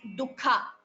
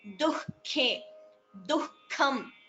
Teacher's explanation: The visarga should be heard between du and kha.